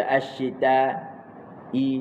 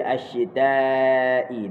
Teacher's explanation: Panjang dia as-yitai panjang dia empat harakat. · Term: Mad muttasil